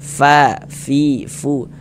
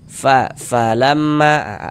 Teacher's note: kalau kita mengucapkan huruf fa itu ada nafas yang mengalir ketika kita mengucapkannya. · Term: sifat hamas